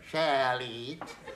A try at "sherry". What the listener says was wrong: No, sherry. You're saying Shelley. Shelley.